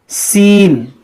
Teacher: یہ سین کا جو مخرج ہے زبان کی نوک اور نیچے اوپر جو دانت ہے ان کا اندرونی کنارہ